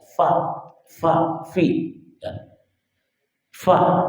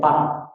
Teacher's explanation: Huruf fa itu dari perut bibir bawah dan ujung gigi seri atas.